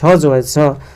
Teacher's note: तालव्य महाप्राण घोष वर्ण का उदाहरण है